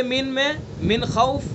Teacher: جی اظہار حلقی. نون ساکن کے بعد حروف حلقیہ میں سے خا ہے تو اس لیے اظہار حلقی ہوگا